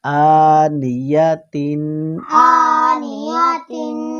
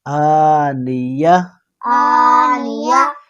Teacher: یہ جو گول تا ہوتا ہے نا، جو اس پہ جب بھی ٹھہریں گے، جب بھی رکیں گے تو وہ تا ہا میں تبدیل ہو جائے گا۔ جیسے اس میں ہم نے پڑھا کہ آنیہ تین، اور پھر کیا ہے، آنیہ، ہا میں تبدیل ہوا نا، تا، گول تا ہا میں تبدیل ہو گیا۔